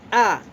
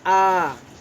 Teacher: इसे हम हर स्वर से 2 गुने समय में बोलते हैं अपने मुख से। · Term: दीर्घ स्वर